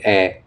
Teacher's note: এ উচ্চারণ করার সময় ঠোঁট গোল হয় এবং অল্প খুলে